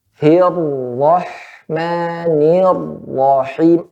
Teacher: pada ro yang bertasydid maka ada penekanan di situ. Ya, Hirrahmanirrahim, agak digenjot gitu.